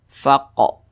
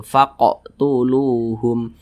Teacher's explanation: Ini huruf qaf sukun, maka dipantulkan faqo, mantul seperti itu. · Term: qalqalah kecil